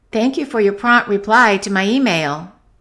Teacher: we stress the noun, so we're going to stress reply more than prompt